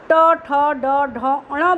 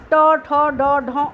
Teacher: ट, ठ, ड, ढ, ण बोलते हैं आपके मुंह का सबसे ऊपरी हिस्सा पलट के जीभ वहाँ टच करती है। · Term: मूर्धा